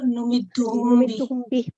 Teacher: میم ساکن کے بعد جب بے آتا ہے، ہاں جی، با، اس کو ہلکے غنہ کے ساتھ پڑھتے ہیں، اخفاء شفوی